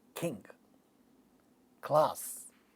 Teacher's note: it is a velar sound because it comes from velum